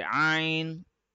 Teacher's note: the letter Ein is read from iron is a light letter it is not a heavy one it does not have the r sound in it but it is a deep letter it comes from the middle